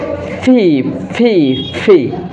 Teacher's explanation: উপরের দাঁতের সাথে আপনার নিচের যে ঠোঁট আছে সেটা লেগে উচ্চারিত হবে